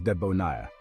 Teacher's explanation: with the stress on the last syllable